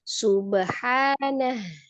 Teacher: H kecilnya dari tenggorokan tengah, H besarnya dari tenggorokan bawah. Jadi dari tengah dulu.